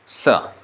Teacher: And then sa is dental, ta position.